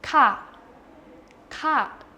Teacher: it's just a short falling tone